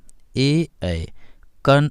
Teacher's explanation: कंठ और तालु में जीभ के स्पर्श से बोले जाने वाले वर्ण ए, ऐ। अगला है कंठोष्ठ्य। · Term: कंठ तालव्य